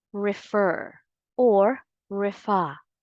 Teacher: the correct pronunciation of this word is refer or refa the second syllable is stressed not the first